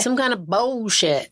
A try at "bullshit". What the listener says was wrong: No, you're still saying it with an L. Bullshit.